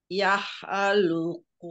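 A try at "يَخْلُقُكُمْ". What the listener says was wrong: nah itu kho yang bukan yah tapi kho yah yakhluqukum fi butuni ummahatikum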